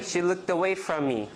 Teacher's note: So there's more stress on away.